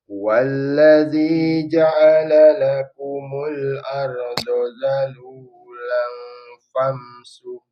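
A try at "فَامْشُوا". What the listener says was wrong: Famshu. Fam habis itu ke huruf shin. Famshu.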